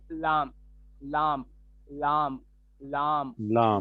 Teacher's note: जबान की करवट के आखिर से नो तक के हिस्सा जब ऊपर एक दाढ़ और दांतों के मसूड़ से लगे तो उससे लाम निकलता है।